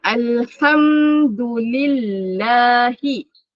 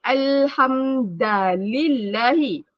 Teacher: Dal itu sepatutnya bunyi du. Tetapi dibunyikan da atau dibaca dengan bunyi da.